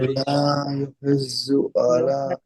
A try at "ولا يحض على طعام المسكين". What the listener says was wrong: ہاں یہ دیکھیے یحض نہیں، نہ ضا ہے نہ ذال ہے نہ ضو ہے، ضا نہیں ہے یہ. یحض، یحض.